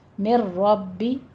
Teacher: مر ربکم میں نون ساکن کا قاعدہ ادغام بلا غنہ کرنا ہے، یہاں پہ من کی آواز سکپ کرتے ہیں بالکل، را لے کر آنا ہے ڈائریکٹ